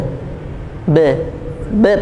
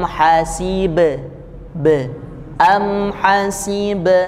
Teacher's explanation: Berhentinya juga di bibir, bukan di pangkal tenggorokan.